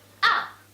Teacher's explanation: the fourth tone is falling tone